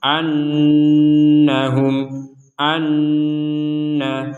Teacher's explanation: Maka kita dengungkan 100% di rongga hidung kita selama 2 harokat. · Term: nun bertasydid